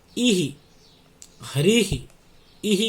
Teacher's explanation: अब देखो यहाँ पर ई है, ई ही, हरि ही, ई ही की ध्वनि आ रही है। तो ये जो विसर्ग है वो ई पर आश्रित है, और ई का उच्चारण स्थान क्या होता है? इचु यशानाम तालु।